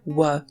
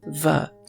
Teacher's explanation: not found in Spanish, Arabic, or French, among many others, and the distinction between the labiovelar approximant, w, and the labiodental fricative, v